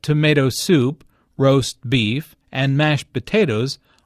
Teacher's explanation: tomato soup roast beef and mashed potatoes are compound words the stress falls on the second word in each phrase